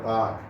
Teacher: La otra persona diría park, sin hacer clara la pronunciación de la R. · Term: no pronunciar la R